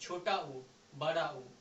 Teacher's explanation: छोटा ऊ बड़ा ऊ ओठ से निकलता है